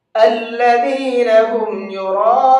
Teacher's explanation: را کو پر کر کے بھی پڑھیں گے اور 4 سے 5 الف کے برابر اس کو کھینچ کر کے بھی پڑھیں گے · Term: بڑا مد